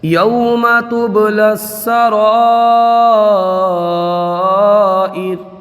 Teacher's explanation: یا میں لین ہوگا بغیر کھینچے بغیر جھٹکا دیے، نرمی سے معروف پڑھا جاتا ہے، با میں قلقلہ ہوگا، اور یہاں پر مد متصل کا قاعدہ ہوگا.